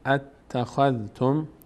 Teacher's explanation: اتخذتم دو بار ت خونده میشه